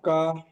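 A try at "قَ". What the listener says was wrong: কা নই, কফ জাবার ক, কফ অক্ষরটি পূর্ব, স্টার চিহ্ন ওয়ালা অক্ষর, কফ জাবার ক।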